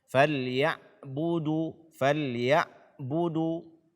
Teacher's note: membaca ain sukun dengan suara tertahan atau dengan syiddah